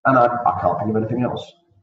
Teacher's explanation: La intonación baja, y esa intonación baja, transmite al interlocutor que hayas terminado tu respuesta.